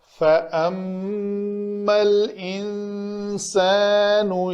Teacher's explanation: نون ساکن کے بعد سین آ رہا ہے حروف اخفا میں سے، تو ہم نے یہاں پہ اخفا کیا۔ یہ ما کا الف جو ہے یہ ساکن ہے، یہ با ساکن ہے، تو ہم نے ملا کر پڑھنا تھا۔